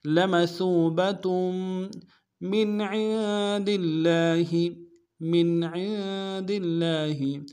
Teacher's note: لمثوبة من عند اللہ میم کو نون ساکن کے ساتھ ملانا ہے، نون ساکن میں یہاں پہ اظہار ہوگا، عین کو نون کے ساتھ ملانا ہے، نون ساکن غنہ کریں گے، عین کو موٹا ادا کرنا ہے